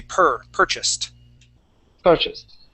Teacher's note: And that ed ending will sound like a T or feel like a T.